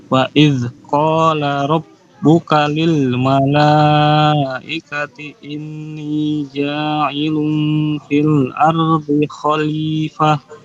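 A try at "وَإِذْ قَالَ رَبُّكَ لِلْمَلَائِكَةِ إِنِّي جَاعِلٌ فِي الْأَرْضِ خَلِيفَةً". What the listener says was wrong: Bagus, Masya Allah, barakallahu fiik.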